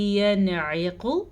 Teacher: اظہار کرنا ہے، ظاہر کر کے پڑھنا ہے، بغیر غننے کے پڑھنا ہے، کیونکہ نون ساکن کے بعد ہمارے پاس عین موجود ہے.